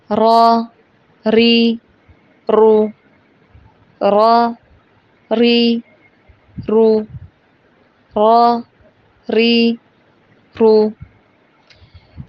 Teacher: یہ انگریزی کی را کی طرح ہے، لیکن اس کو ادا کرتے وقت ہونٹوں کو گول نہیں کرنا